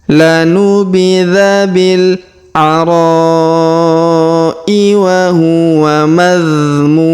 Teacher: Huruf mu kita panjangkan 2, 4 atau 6 harokat karena di depan huruf mu terdapat waw sukun sebelum huruf pemberhentian, dan huruf pemberhentian huruf mun kita sukunkan atau kita matikan.